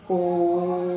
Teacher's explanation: स्वर के उच्चारण में ह्रस्व स्वर से तीन गुना समय लगता है